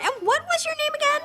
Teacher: the T at the end of what is actually a stop T. We cannot hear this sound